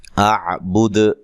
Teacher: یہ دال پہ قلقلہ کرنا ہے وقف کی صورت میں واضح طور پہ